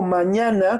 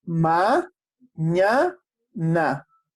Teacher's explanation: Yo digo mañana, ¿cuál es la mayor fuerza de voz? La segunda.